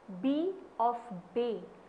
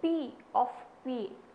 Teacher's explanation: the vocal cords vibrate for B but not for P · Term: voicing